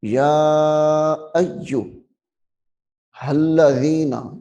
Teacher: یہاں پہ یا کو بھی لمبا کرنا ہے، پھر الف کو یا کے ساتھ ملانا ہے. یا ایو، حمزہ یا زبر یا پیش یو، یا ایو الذین، اس ہا کو لام کے ساتھ ملائیں.